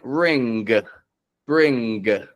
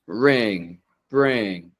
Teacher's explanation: I'm not bringing my tongue up like brin, sin, but I'm pulling it back. The sound fades off. It gets redirected through my nose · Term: ng tongue position